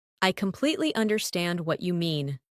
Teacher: Emphasize completely and understand.